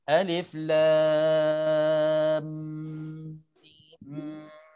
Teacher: Jadi idgham hukumnya 2 harakat dengan 2 harakat. Jadi lam panjang 6 harakat. Sebelum masuk mim ada dengung 2 harakat, baru kita masuk 6 untuk mim ini. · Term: Idgham mithlain saghir